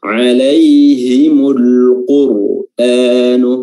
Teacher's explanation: huruf qaf yang didahului dengan alif lam, itu huruf qafnya dibaca jelas atau biasa disebut juga dengan alif lam al-qamariyah atau izhar qamariyah, ya.